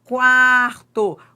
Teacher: Só que em quarto, o U é pronunciado. Então, não forma dígrafo.